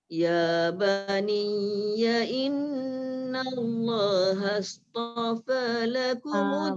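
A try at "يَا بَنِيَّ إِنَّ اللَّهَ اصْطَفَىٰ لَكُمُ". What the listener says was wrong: Bunda, dekat sod tu tebal.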